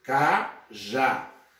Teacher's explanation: vamos ter cajá sílaba tônica já e é uma oxítona porque a última sílaba é a sílaba tônica · É uma oxítona, porque a última sílaba é a sílaba tônica. Essa oxítona termina em a, então eu vou acentuá-la graficamente.